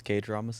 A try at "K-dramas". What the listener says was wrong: K-dramas, not gay dramas. Emphasize the K.